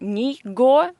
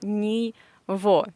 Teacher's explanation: this g in this combination, we pronounce as v, ni vo. Not ni go, but ni vo.